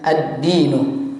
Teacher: Maka kita hilangkan huruf lamnya, langsung kita idghamkan ke huruf dalnya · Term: alif lam asy-syamsiyah